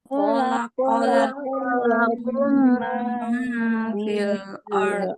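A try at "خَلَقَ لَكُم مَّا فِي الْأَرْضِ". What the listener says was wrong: Ah, hati-hati. Gunanya kurang ya. Ukurannya samakan. Khalaqalakum ma fil ard.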